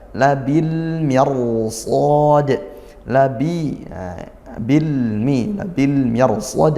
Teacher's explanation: Ada Al maka ini al-nya izhar qamariah lam trif dibaca jelas